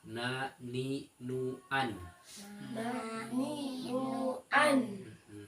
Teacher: huruf nun ini keluar dari ujung lidah di bawah makhraj lam jadi ujung lidahnya agak bawah dari makhraj lam seperti contoh na